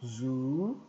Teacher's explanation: nós temos um som de z e u longo